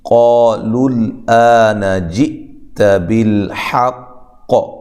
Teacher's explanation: لام کو لام سے ملانا ہے، لیکن لام کو موٹا بھی نہیں کرنا، ہلانا بھی نہیں ہے۔ آ الف مدہ کے قائم مقام ہے، نون کو لمبا نہیں کرنا۔